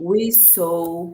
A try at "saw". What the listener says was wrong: Não é sou, sou é alma. Sou, alma. Só. Percebe como é sutil a diferença? Sou. Assim, ó.